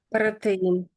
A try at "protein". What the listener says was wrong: so I would say this word is protein. Protein. So that you're trilling the R's slightly occasionally. So we don't really do that. So try be careful on that if you can.